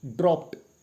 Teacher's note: P sound is again here. It is followed by ed sound, and this ed sound, it will be pronounced as t sound.